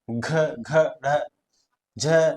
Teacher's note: अब परिभाषा के अंतर्गत आप इनका उच्चारित करके देख सकते हो कि जिन ध्वनियों के उच्चारण में स्वर तंत्रियों में कंपन उत्पन्न होता हो। अब इनका उच्चारण जब भी हम करेंगे हमारे अंदर कंपन उत्पन्न होगा मुंह के अंदर। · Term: घोष वर्ण